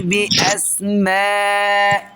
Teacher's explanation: الألف اللي هو حرف المد، والهمزة اللي هي سبب المد، جم في كلمة واحدة، جم في مكان واحد، جم في حتة واحدة، يبقى اتصلوا ببعض. يبقى دي مد متصل حكمه واجب. هنمده بمقدار 4 حركات أو 5 حركات.